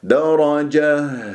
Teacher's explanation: الصوتية في منطقة أقصى الحلق، لأن التاء المربوطة سنقف عليها بها، فيجري فيها الصوت والنفس، فلازم نسمع الهزة، هزة الهاء درجة بهذه الطريقة. طبعا إذا استمريت راح يكون عندي تنوين فتح